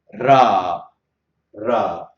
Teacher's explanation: So here we have got It is in English, we can say R, but it's not exactly R, because it is, we get it out of this this touching of the underside of the tip of the tongue with the palate of the mouth